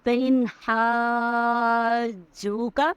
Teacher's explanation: فإن پہ ہمیں غنہ نہیں کرنا، رکنا نہیں ہے، یہاں پہ اظہار حلقی کا قاعدہ ہے۔ · ہا کے بعد جو ہم حلق سے ادا کریں گے اور ہا کو جیم سے ملائیں گے، ہا کا مد بھی ادا کریں گے اور یہ جیم کا شد بھی